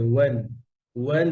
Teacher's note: সব সময় ওয়াও পাতলা আর ঠোঁট গোল করে